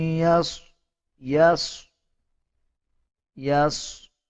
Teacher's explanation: صاد کو پر یعنی موٹا پڑھا جائے گا